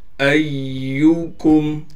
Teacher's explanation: یا پر تشدید ہونے کی وجہ سے حمزہ کو یا سے ملا رہے ہیں اور تشدید ہونے کی وجہ سے یا پر تھوڑا ٹھہراؤ کریں گے۔